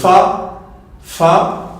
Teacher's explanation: on aura nos dents supérieures qui vont venir toucher la lèvre inférieure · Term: la lettre fa